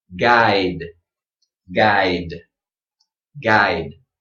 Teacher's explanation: make sure this final sound is strong but it doesn't receive a little schwa at the end